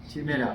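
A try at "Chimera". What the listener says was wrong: উচ্চারণটা হয় চিমেরা, না হয় মানে আমাদের বাঙালি উচ্চারণ হলে চিমেরা, আর হচ্ছে যদি কিনা সঠিক তাহলে ক্যামেরা উচ্চারণ হয়।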